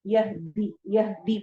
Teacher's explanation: یہدی کو لمبا نہیں ہونے دینا یعنی دی نہیں کرنا، یہدی پڑھنا ہے